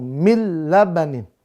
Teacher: siniban di situ pemirsa ya labanin maka ingat patokannya tidak dengung bila gunah enggak boleh dibaca dengung